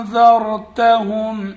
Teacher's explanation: سواء علیہم، علیہم، علیہم، اانذرتہم، حمزہ زبر حمزہ نون زبر ان، ذال را زبر ذر انذر نون ساکن ہے اس کا اخفا ہوگا را ساکن ہے لیکن اس سے پہلے زبر ہے اس لیے را کو ہم پر یعنی موٹا کر کے پڑھیں گے